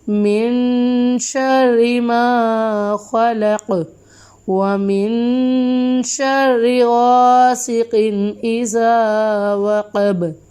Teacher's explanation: ادھر نون ساکن پہ ہم غنہ کریں گے، را کو باریک پڑھیں گے کیونکہ را کے نیچے زیر ہے۔